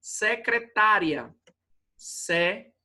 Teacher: Então, a penúltima paroxítona. A penúltima sílaba é tônica.